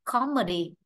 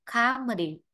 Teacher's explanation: Nếu đọc comedy thì O nó ngắn hơn còn comedy A nó kéo dài hơn